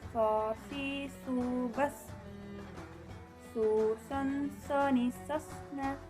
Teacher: Tempat keluarnya sama seperti melafalkan huruf sin, serta ciri dan karakternya tidak jauh berbeda dengan huruf sin. Bedanya adalah suaranya yang menebal ketika melafalkan huruf sod.